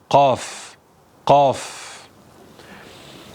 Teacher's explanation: dil kökü yani dilimizin arka tarafı havaya kalkar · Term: Kaf harfi